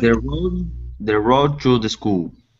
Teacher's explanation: You can actually combine the D and the T together, saying the road to the school. Try that. The road to the school.